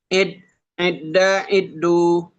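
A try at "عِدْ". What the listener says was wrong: Bukan di tasdid ya, nggak ada tasdidnya. Aid, Aida, Aidu.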